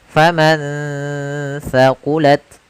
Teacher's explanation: ada nun sukun bertemu dengan huruf tsa. Maka nunnya disamarkan ke huruf tsa. Faman tsaqulat sambil ditahan gunahnya.